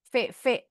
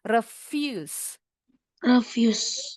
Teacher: V itu pita suaranya bergetar. Jadi bacanya bukan refuse.